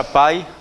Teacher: decrescente é porque ele passa da vogal que é mais forte para semivogal que é mais fraca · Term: ditongo